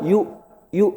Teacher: Hamzah itu tempatnya di mana? Tenggorokan bawah Pak. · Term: huruf hamzah